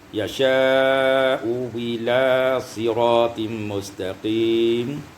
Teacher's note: Ibnu Katsir membaca dua wajah, bi ibdalil hamzati tsaniyah wawan maksurah, dengan menggantikan hamzah yang kedua dengan waw yang maksurah